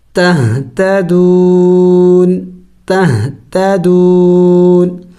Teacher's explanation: وقف کریں گے تو وقف میں اس نون کو سائلنٹ کریں گے اور یعنی ساکن کر دیں گے